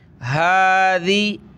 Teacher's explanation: ہا کے اوپر کھڑا زبر ہے، ایک الف کی مقدار میں اس کو کھینچیں گے